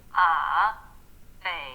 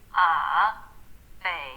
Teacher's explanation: First it falls and then it rises.